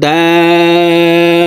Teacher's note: এই দালকে 4 আলিফ টেনে তাসদিদওয়ালা বাকে ধরব